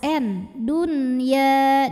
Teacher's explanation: menghadapi huruf ya dalam satu kata yang sama yaitu kata addunya maka nun sukun tetap dibaca jelas n Dunya dan jangan sengau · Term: izhar mutlak, idhar mutlak